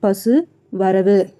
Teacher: முற்றியலுகரம் அப்படின்றது அந்த உகரம் தனக்குடைய மாத்திரையிலிருந்து குறைந்து ஒலிக்காது, முழுமையாக ஒரு மாத்திரை அளவாகவே ஒலிக்கும்